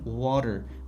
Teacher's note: Qoidasi ikkita unlik tovush orasida qolib ketadigan boʻlsak t bizda u yumshoq D deb talaffuz qilinar ekan.